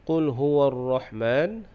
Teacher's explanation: Dalam ayat ini, Qul huwa ar-Rahman, huwa ar-Rahman tu huruf ra tu dibaca dengan tebal. Qul huwa ar-Rahman, ar-Rahman huruf ha keluarnya di tengah kerongkong.